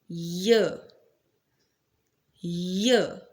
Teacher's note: Next place of articulation is the palatal, when the middle of the tongue touches the hard palate.